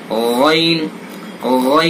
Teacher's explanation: वहीं से आपको गैन को अदा करना है, यानी हलक के मुंह की तरफ वाले हिस्से से।